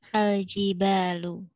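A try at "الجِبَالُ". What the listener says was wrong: Ya, kalau jibal, mbaknya panjang. Al-Jibalu, panjang mbak.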